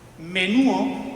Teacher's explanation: pérdida de la d intervocálica